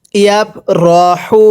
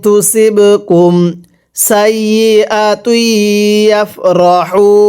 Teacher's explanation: এই হাটা উচ্চারণের সময় গলার মাঝখান থেকে বাতাস বের করে পড়তে হবে।